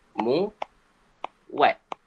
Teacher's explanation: Sebab sini ada u vokal tinggi dan diikuti oleh vokal lain. Jadi dia mesti dia mesti tulis ada geluncuran mu wat.